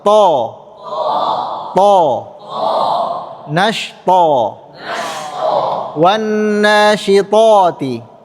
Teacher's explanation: Tebal ini disebut dengan sifat isti'la. Ya, karena lidah belakang naik.